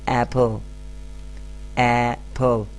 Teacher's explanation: So the initial sound A is directly coming from your throat. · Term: vowel sound